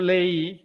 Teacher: hay hiato de vocal abierta y vocal cerrada y el acento recae en la vocal débil